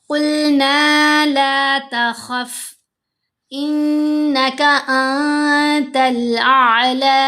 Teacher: قلنا لا تخف انک انت الاعلی، یہاں پر قلنا لا تخف، یہاں قلنا نون کے اوپر زبر ساتھ الف حرف مدہ، تو ہم نے نون کو 2 حرکات کی مقدار لمبا کیا، لام کو بھی 2 حرکات کی مقدار ہی لمبا کریں گے۔